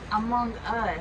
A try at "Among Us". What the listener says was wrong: No, not one word. Among Us.